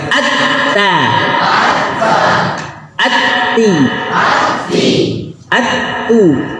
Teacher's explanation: Ta ada hamas tapi sekedip. Tidak boleh banyak.